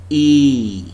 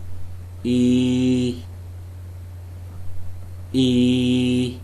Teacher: the front of the tongue is raised to a height slightly below and behind the closed front position the leaves are spread the tongue is tense with the side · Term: long vowel sound